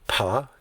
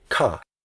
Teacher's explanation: when you say pa your lips press together and that doesn't happen when you say ka